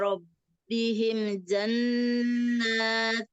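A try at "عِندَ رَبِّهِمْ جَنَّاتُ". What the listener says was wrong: Nah, kalau itu kayak Robbihim jannah itu kurang sempurna mim sukunnya. Mimnya. Tetap ya, dia izhar safawi, tetap mim sukunnya tetap. Inda Rabbihim jannatu.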